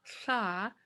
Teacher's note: Tongue up with air coming out, air and spit coming out the sides of the tongue.